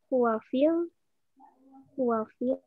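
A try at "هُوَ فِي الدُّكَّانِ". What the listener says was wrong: Fit. Ya, dalnya tasdid ya. Huwa fit dukani. Huwa dukani.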